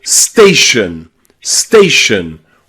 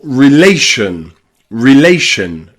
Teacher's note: You'll also hear the letter O pronounced with a schwa when it comes in words with T-I-O-N or S-I-O-N at the end